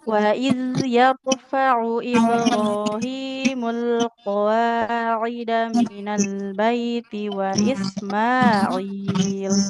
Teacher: Wa iz huruf dal sukun, pastikan mengalir suaranya.